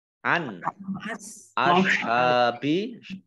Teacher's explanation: Nun sukun bertemu dengan huruf alif, ya, bacaan izhar dibaca jelas. · An ashabi hak fathah berdiri mat tabi'i panjang 2 harokat